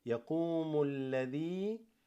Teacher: So this alif drops, hamzatul wasl actually, and then you go straight to the lam.